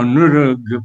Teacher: col G finale, col suono gutturale, diciamo sonoro e non sordo nella parte terminale